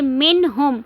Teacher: نون ساکن کے بعد ہا آ رہا ہے تو نون کو ہم نے ظاہر کر کے پڑھنا ہے